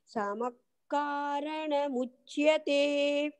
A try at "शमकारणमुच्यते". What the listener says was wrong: சமக்காரண ஷ ஆ பகினி சமஹ்னு சொன்ன மாதிரி இருந்தது அது வந்து ஷம சமக்காரண